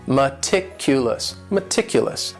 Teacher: this word has four syllables and the stress is on that second syllable meticulous meticulous that first syllable also has that schwa that a